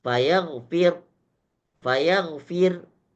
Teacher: Fayagfir tetap berlaku tarqik. Kalau dibaca ismam berlaku tarqik.